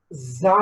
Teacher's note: Sound is voiced. Place is alveolar, and manner is fricatives. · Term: za sound